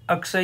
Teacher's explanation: इसमें क और श मिलकर आवाज बनाते हैं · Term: संयुक्त वर्ण